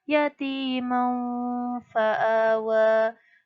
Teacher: Jadi langsung masuk ke fa, mendengung sedikit, agak samar-samar. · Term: Ifa hakiki